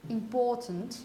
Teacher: the first syllable contains the E sound, and it's unstressed